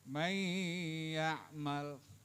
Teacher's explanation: Nun mati ketemu iya, namanya idgham, hukumnya idgham bi gunnah. May ya'mal Ini nun mati ketemu ya.